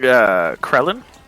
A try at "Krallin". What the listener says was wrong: Krallin. Krallin. Krellin from DBZ, only an A.